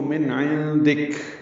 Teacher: کاف ساکن ہوگا، اس پہ ہمس ہوگا